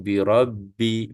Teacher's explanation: Kemudian birabbil tu dia ada tasydid atas ba, seolah-olah kita pegang 2 kali ba lah ya, satu ba mati, satu ba baris bawah ya. Jadi kita sebut birabbil alif lam qamariyah, kita akan zahirkan lam dia tu birabbil Kita sebut birabbil falaq.